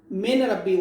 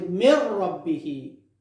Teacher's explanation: After rule we merge noon into the ra. Now is mir rabbihi. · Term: idgham without gunna